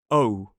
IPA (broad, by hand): əʊ